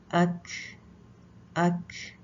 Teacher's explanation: اس میں کیونکہ سانس جاری رہتا ہے، جب آپ مخرج سے کاف کے ہٹیں گے تو سانس باہر نکلے گا